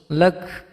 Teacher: Kafnya karena disukunkan berhenti maka menjadi hamus